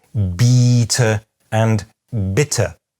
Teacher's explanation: But although a linguist might argue that they differ primarily in tenseness, a native speaker will usually perceive this as a difference in vowel length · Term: tense and lax vowels